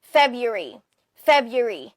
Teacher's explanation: So, parang mabilis lang yung third syllable.